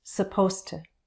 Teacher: To reduces. It sounds more like /tə/.